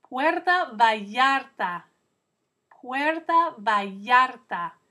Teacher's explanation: Can you hear that double L sounding like a Y in the middle of the word Vallarta?